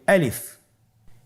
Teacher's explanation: আলিফ হরফটি মাখরাজ হলো আপনার মুখের শূন্যস্থান থেকে। গলা এবং মুখের শূন্যস্থান হতে আলিফ হরফটি উচ্চারিত হয়।